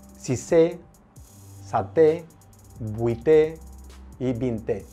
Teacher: Siempre es con el acento en la E. El acento en la E siempre es abierto. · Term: acento abierto